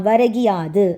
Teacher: கீ யா மாறி இருக்கு எதோட சேரும் போது எகரத்துடன் சேரும் போது ஓகேங்களா எகரத்துடன் சேரும் போது உகரம் இகரமாக மாறுகிறது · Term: குற்றியலிகரம்